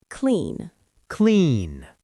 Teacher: My throat is buzzing on the N. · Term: soft D